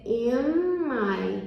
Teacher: Então, ao invés de fazer in my, você vai fazer in my. Você prolonga o M, finge que a palavra é pronunciada com M e já usa para a próxima palavra · Como os sons são parecidos, você vai pronunciar como se in fosse im, como se tudo fosse M, um M só. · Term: assimilation